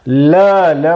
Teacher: ल म्हणताना जीभ दाताला लागते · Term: दंत्य वर्ण